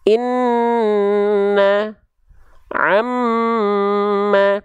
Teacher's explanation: huruf nun dan mim ketika bertasydid, oke, dia harus ditahan 2 harokat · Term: gunnah